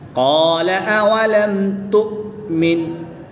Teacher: میم ساکن کے بعد حرف با اور میم کے علاوہ حرف تا ہے تو یہاں پر اظہار شفوی ہوگا. میم ساکن کو خوب ظاہر کر کے پڑھیں گے · حمزہ ساکن کو ہمیشہ جھٹکا دے کر پڑھتے ہیں تو اس کو جھٹکا دے کر پڑھیں گے